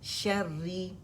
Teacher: जहाँ पे रॉ हमारे पास जो है ना कसरा के साथ आ रही, मुशद्दद है, तो उसका कानून एक है, रॉ को हमने बारीक ही पढ़ना है